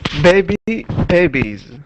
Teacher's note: vowels are voiced um all vowels are voiced sounds so we're we're going to pronounce it the S with a z sound